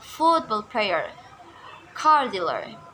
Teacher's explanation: nouns where the stress lies in the first word